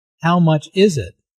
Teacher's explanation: Notice that the main sentence stress falls on is in this question.